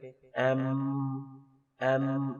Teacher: جب ایم کہتے ہیں ہونٹ مل جاتے ہیں